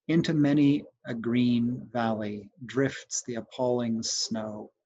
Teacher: Time breaks the threaded dances and the diver's brilliant bow." Well, so if I were scanning this, I would put stresses on the first syllable of many and I'd put one on green, and I'd put one on the first syllable of valley.